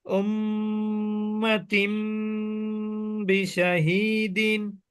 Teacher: তাসদিদ থাকার কারণে এটা কি হবে প্রথমে ওয়াজিব গুন্না তারপরে হবে তানবিনের পরে বা আসার কারণে এই তানবিনের মধ্যে লুকায়িত নুনটা মিম হয়ে যাবে আর গুন্না হবে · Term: ইকলাব